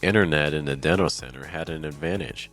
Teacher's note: the silent T is basically when the t is not pronounced at all this is going to happen when the letter N comes before a t sound usually in the middle of a word this is also one